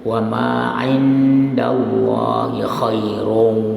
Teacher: Allah lamnya itu kamu panjangkan dan ditebalkan